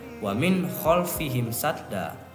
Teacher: Jadi, cara membaca hukum izhar yaitu nun mati atau tanwin harus dilafalkan dengan jelas dan tidak boleh terpengaruh oleh huruf halq yang terletak setelahnya